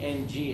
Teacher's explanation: when you say NG actually the back of your tongue touches the roof of your mouth